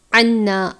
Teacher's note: نون مشدد پر ہمیشہ غنہ کرتے ہیں، غنے کی مقدار ایک الف کے برابر ہے. الف سے پہلے زبر ہے الف مدہ.